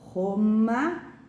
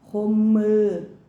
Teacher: O som da vogal A, o som da vogal A em Roma é aberto. E o som em romã é nasalizado.